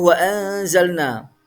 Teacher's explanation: Tidak boleh dibaca wa anzalna, tapi wa anzalna ada nun sukun bertemu za, dibaca ikhfa samar